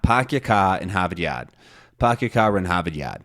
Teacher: instead of saying R they say ah